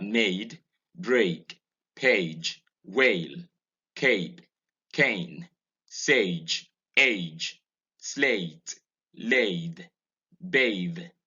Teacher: Vowel 13 is a diphthong. It's a mid-front closing diphthong. · It's a combination of A and E. So the mouth opens for A and then it goes to E.